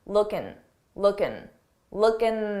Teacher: common to take a word that ends in in G and drop the G sound that g sound and just end it on N